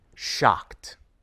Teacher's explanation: In shocked, ed comes after the sound k. The sound k is voiceless. K. So we pronounce the ed ending as t.